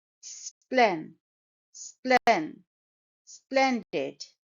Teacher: it's a two syllable word and the stress is on the first syllable